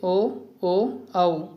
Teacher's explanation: కంఠ్యాలు, ఓష్ట్యాలు ఇవి 2 కలిపి పలికే అక్షరాలను కంఠోష్ఠాలు అంటాం